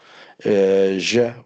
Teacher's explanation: voiced, post-alveolar fricative.